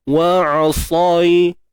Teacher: Untuk ya sukun sebelumnya baris atas bacaan lin